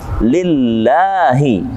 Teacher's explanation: lamnya kasrah, maka huruf Allahnya dibaca dengan tipis atau tarqiq dalam ilmu tajwid